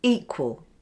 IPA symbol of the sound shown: iː